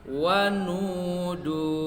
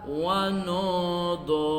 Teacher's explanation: Seharusnya dibaca wanudu, tetapi dibaca wanodo. Huruf U mengganti jadi O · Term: pengucapan dhammah